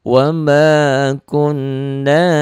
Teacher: nyamber dan double, dengung di hidung ditahan. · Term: gunnah